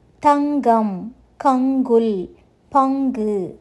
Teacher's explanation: சொல் நடுவில் உள்ள ஒளிப்புள்ள ஒளிக்குப் பின் வரும்போது ஜி உச்சரிப்பை கொடுக்கும்